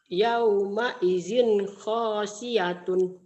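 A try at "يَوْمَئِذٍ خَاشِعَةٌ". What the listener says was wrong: Bukan khasyiatun. Khasyi'atun. Ain. Lagi.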